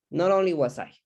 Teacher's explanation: we join the final t with the o because there is a catenation process there